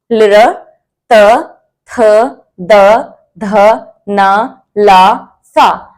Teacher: अब आपने देखा होगा कि इसमें जब हमने इनको बोला तो जो हमारी जीभ है उससे दांतों को भी टच हुआ। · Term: दंतया